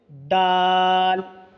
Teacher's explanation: दाल का मखरज, ज़ुबान की नोक को ऊपर के दांत के किनारे पर लगाने से दाल अदा होते हैं।